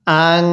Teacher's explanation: এই নুন সাকিনটা কিন্তু গুন্নাহ করে পড়তে হবে কারণ এই নুন সাকিনের পরে শিনটি হলো ইকফার হরফ আর নুন